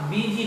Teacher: तो आपने देखा कि यदि यू या आई के बाद एस रहे और उसके बाद ई या वाई रहे, एस का साउंड दंत स्व या तालव्य स्व नहीं होकर जॉ हो जाता है